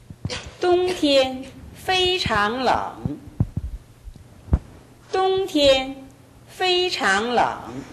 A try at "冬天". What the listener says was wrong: 겨울은 똥티엔 이게 아니라 똥보다는 티엔이 약간 낮습니다. 똥티엔 이 정도 됩니다. 똥티엔 이 정도로 발음합니다. 티엔이 약간 낮습니다.